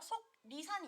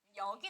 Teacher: 기역, 디귿은 파열음 중에 일부예요. 그쵸? 근데 그 뒤에 리을이 연결됐더니 갑자기 니은으로 발음을 한대요. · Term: 비음화